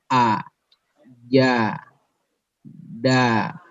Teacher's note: asyiddah, suara tertekan, ya, tertekan. Jadi tidak bisa langsung mengucapkan tanpa ditekan dulu, ya, seperti a, ya, tekan dulu ke makhrajnya kemudian baru ucapkan a, ja, da, kena kan, tekan, ya.